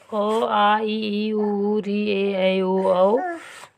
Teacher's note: वह ध्वनि जिसका उच्चारण करते समय हवा अबाध गति से मुंह से बाहर निकलती है बिना बाधित हुए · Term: स्वर